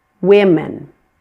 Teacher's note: The word women, that O in women is pronounced as a short I.